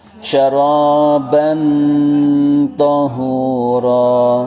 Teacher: Tanwin bertemu to. Namanya ikhfa hakiki. Cara bacanya samar dan dengung.